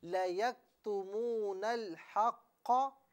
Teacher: نون کو لام کے ساتھ جب ہم ملا رہے ہیں تو لام کو پر نہیں پڑھنا، اسے یوں پڑھیں لَيَكْتُمُونَ الْحَقَّ.